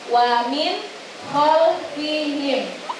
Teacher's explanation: Ada nun mati bertemu dengan huruf kha. Hukum bacaannya adalah idhar halqi yang harus dibaca dengan jelas.